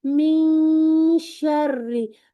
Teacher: नून साकिन को ऐसे अदा करें कि जैसे शीन अभी अदा होने ही वाला है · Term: इफा